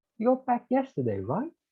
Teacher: not so sure if you know it definitively so you rise so you raise your voice in order to signify that you don't know the answer